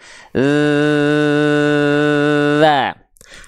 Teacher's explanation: sambil pegang Tengah tenggorokan dia bergetar pasti tenggorokannya karena suaranya mengalir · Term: huruf zal